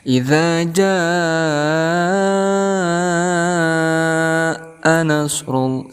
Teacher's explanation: Adapun panjangnya daripada mad wajib muttasil ini yaitu 5 harakat.